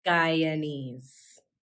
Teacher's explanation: Notice the second syllable in Guyanese is a schwa.